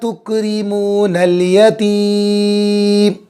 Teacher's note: چھوٹا کاف صاحب نکالیں گے، را کو باریک کریں گے. بہت سے مرتبہ ہم مخرج پہ دھیان نہیں دیتے تو چھوٹے کاف کو بڑا کاف کی آواز نکالتے ہیں.